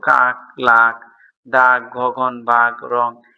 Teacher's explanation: জিভের পেছনের অংশ উঁচু হয়ে আলজিভের খুব মূলের কাছাকাছি নরম তালু স্পর্শ করে জিহ্বামূলীয় ব্যঞ্জন উচ্চারিত হয়